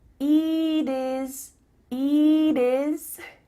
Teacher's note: the final T is changing to a D